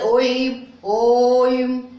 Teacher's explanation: पहला ह्रस्व है, दूसरा दीर्घ है, और तीसरा प्लुत है। ह्रस्व स्वर से तिगुना अर्थात 3 मात्रा का समय लगता है